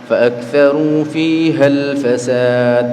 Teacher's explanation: ketika dia disambung dengan kalimat sebelumnya faakaru fihal Fasad berarti kan Hamzah hamzahnya enggak dibaca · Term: Hamzah wasal